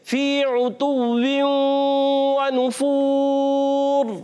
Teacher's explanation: मुसलसल होंठ गोल रहेंगे, और वाव की अदायगी होती है होंठों की गोलाई से